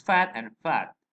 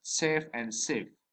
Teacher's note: These are sounds formed with the upper teeth and the lower lip. The initial sounds of the words fat and fat, and the final sounds in the word safe and safe are labiodentals. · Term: labiodental sound